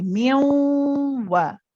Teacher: be careful not to prolong the wa after. When you pronounce this wa, it's only one count. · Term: one count wa